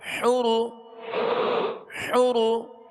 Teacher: حا پیش حو، را پیش رو، حرو، حرو. را کو پر پڑھیں گے، را پر پیش ہے